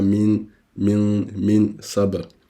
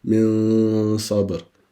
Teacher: Nascondiamo il suono del nun o il tanwin con la gunna. Quindi non vogliamo che si senta bene il suono della nun o del tanwin, del nun sakin o del tanwin, ma lo vogliamo nascondere. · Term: ikhfa